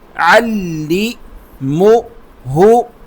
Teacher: عین کو لام سے ملائیں گے، عین حلق سے